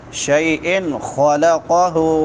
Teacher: خا بھی موٹی ہوگی اور قاف بھی موٹا ہوگا